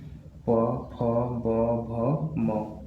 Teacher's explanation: जब हम इन व्यंजनों का उच्चारण करते हैं तो हमारे जो होठ होते हैं वो आपस में क्या होते हैं? टच करते हैं। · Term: ओष्ठ व्यंजन